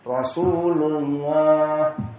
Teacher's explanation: Tapi kalau Rasulullah dengan dhammah maka dia mufakhamah.